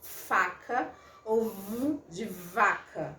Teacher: O meu dente superior vai ao encontro aqui, né, do meu lábio. Aliás, meu lábio inferior que vai ao encontro do meu dente superior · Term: consoantes labiodentais